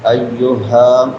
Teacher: ہا بڑی ہے اقصی حلق سے حلق کے آخری حصے سے